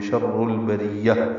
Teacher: تہ مربوطہ سے ملانا ہے، ہا میں تبدیل ہو جائے گی، ہا ساکن، سانس جاری رہے گی پڑھتے ہوئے ، شر البریہ، اور تا ختم ہو جائے گی، ہا بن · باریک، ہم میں اظہار شفوی، شر البریہ میں را پر ہے، شر میں را کو البریہ کی لام سے ملانا ہے، اظہار قمری ہے